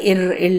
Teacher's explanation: நாக்கோட நுனி மேல்வாயை வருடும்போது இர் இல் அப்படிங்கிற எழுத்து பிறக்குது